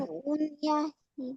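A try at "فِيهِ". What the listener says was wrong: এটা ফা, নুন নয়। নুন থাকলে কি হয়, এই এই মুখ এই যে গোল মতো না, এটা নুনটা, নুন থাকলে এই গোলটা হয় না, নুনটা এরকমই হয় শুধু ডাইরেক্ট। ঠিক আছে, এরকম বুঝে আসছে, ওটা নুন হয়, ওটা নুন নয়।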